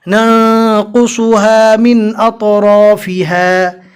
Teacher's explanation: قوف، صاد، تو، رو پور کر کے پڑھتے ہیں، لہٰذا آپ کو بھی پور کر کے یعنی منہ بھر کر موٹا پڑھنا ہے۔